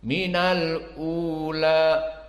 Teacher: Dan lamnya di sini bagi qiraah Hafiz dan yang lainnya seperti Ya'qub Al-Hadrami dibaca dalam keadaan fathah, menjadi minal ula. Minal u harokat 2 saja untuk mad badal, dan la 2 harokat saja karena memang mad tabi'i dan dia difathahkan.